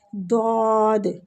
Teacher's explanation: دعاد میں زبان کی نوک کہیں بھی ٹچ نہیں ہوتی، صرف سائیڈ ٹچ ہوتی ہے۔